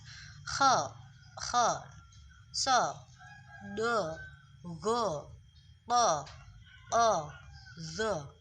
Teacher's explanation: Jadi kalau tadi adalah pangkal lidahnya naik, semisal ini adalah lidah, ini ujung lidah, ini pangkal lidah. Kalau isti'la itu pangkal lidahnya naik ke atas. · ketika pangkal lidah itu naik ke langit-langit, maka huruf yang keluar itu akan terkesan seperti berbunyi huruf O. Pangkal lidah ini naik ke atas, ke langit-langit, maka seperti huruf O.